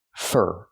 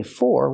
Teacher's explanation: Pronunciation, fur. The word for is not stressed here, so we don't say for, we say fur, using the sound like burger.